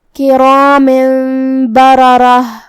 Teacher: جو کہ یہ دونوں را پہ زبر ہے تو دونوں را کا حکم ہے تفخیم. ہم دونوں کو بھاری آواز میں پڑھیں گے. آخری میں تاء مدورہ پہ رکیں گے تو اس پہ جزم سے رکیں گے تو ہمیں آخری میں حرف الہا پڑھنا ہے.